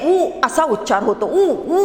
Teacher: ऊ ऊ म्हणताना बघा तुम्ही म्हणजे जीभ पुढे ओठाकडे येत नाही किंवा ओठाजवळ आलेली आपल्याला दिसत नाही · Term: पश्चस्वर